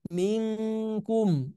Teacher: Jadi bukan milkum mil mil mil enggak tapi ming betul-betul ke eng ya.